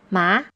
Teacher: the second tone is the rising tone and the tone mark is the rising line you pronounce words